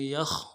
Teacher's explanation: یا کو خا کے ساتھ ملانا ہے، خا کو موٹا کریں گے